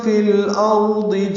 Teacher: فی الارض میں لام ساکن پہ اظہار قمری، را ضاد دونوں پر ہیں، فی الارض دے نہیں پڑھنا، فی الارض دی پڑھنا ہے، دوات زیر دی ہوتا ہے۔